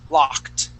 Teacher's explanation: when a word ends with a K or a K sound, and it has an ED ending, that ED sounds like a T